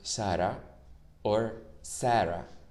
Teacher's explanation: The S sound in Spanish, it's not like the S sound in English. It's a bit more between the sh and the s. It's a very soft S. However, the Latino counterpart of it is just like normal.